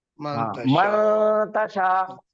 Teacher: اور تا حروف اخفا کے 15 حرفوں میں سے ہے، اس وجہ سے نون کی آواز کو ناک میں چھپا کے غنہ کر کے پڑھیں گے